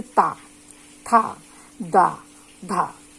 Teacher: अब तीसरा आता है दंतय। दंतय है, इन शब्दों के उच्चारण में जीभ है ऊपर के दांत को छू लेती है